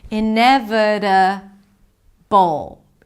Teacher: 'i-neh-vuh-duh-bol: it's a B sound, a schwa, and a dark L. You create this tension in the back of your throat. · Ineve, it's a V sound and a schwa. Ineve, that's a flap T, so it sounds like a D.